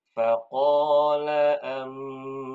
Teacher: Nun sukun ketemu ba. Iqlab, Ustaz. Iqlab. Nah, jadi ditahan 2 harokat.